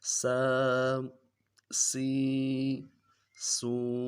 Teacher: سیٹی کی آواز نکلے گی نرمی سے · سین کھڑا زبر س، س سین کھڑی زیر سی، سی سین کھڑی زیر سی، سین الٹا پیش سو، سو سین الٹا پیش سو۔ تینوں حرکات کو کھڑا زبر کھڑی زیر الٹا پیش کو ایک الف دال میں کھینچ رہے ہیں